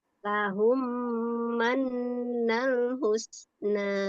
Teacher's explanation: Awas, mannya tahan, ada nun bertasdid.